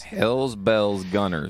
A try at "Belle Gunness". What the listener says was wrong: No, not Gunner. Gunness. Yes, but it's Gunness. There's no I in it.